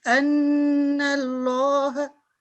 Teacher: And she read quickly for 1 second, but its time is 2 second nasal sound because this is Noon Mushaddad